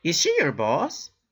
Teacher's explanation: The person is not sure. And the intonation is going up, like any other yes-no question